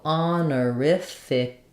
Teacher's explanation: I'm kind of following the rules of second to last syllable stress within the chunks of this word